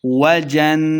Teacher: نون مشدد آ گیا تو غنہ کریں ہیں